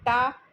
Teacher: जबान तालू के पिछले भाग में लगती है ऊपर, तो टा माने मूर्धन्य